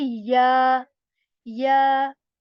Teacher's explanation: Okay, so there is letter ya again, and this is articulated when the middle portion of the tongue is it touches the palate, and we say ya. Again, we are supposed to stretch this ya sound for two counts